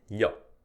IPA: ʎ